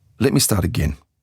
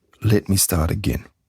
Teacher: And you have to have falling intonation at the end, not rising. It's not supposed to sound like a question or panic. · So make the voice go down on again, not up.